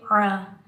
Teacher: عین کو حلق کے درمیان سے ادا کریں گے